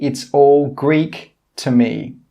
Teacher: my intonation or my pitch goes up